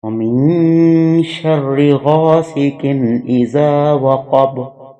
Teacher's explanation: اس میں اخفا کے بعد غنہ بھی ہوگا کیونکہ شرن جو ہے نون غنہ ہے، آگے نون مشدد ہے، اس پہ غنہ ہوگا۔